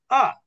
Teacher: হামজার উচ্চারণ অনেকটা কিছুটা ধাক্কার মতন